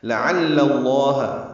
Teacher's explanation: عین وسط حلق سے ادا کریں گے، لام دونوں باریک ہیں، لیکن لفظ اللہ کا لام پر ہے کیونکہ لعل کے لام پر زبر آئی۔